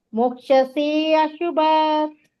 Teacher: ಮೋಕ್ಷಸೇ ಶುಭಾತ್ ಅಲ್ಲ, ದೀರ್ಘ ಮಾಡ್ಬೇಕು ನೀವು.